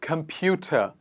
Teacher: the word ends in the sound which is the schwa sound